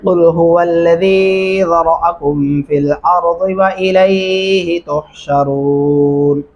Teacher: قل قاف موٹا پڑھیں گے، ہا بھی موٹا بھری آواز میں پڑھیں گے، زال کو نرمی سے ادا کریں گے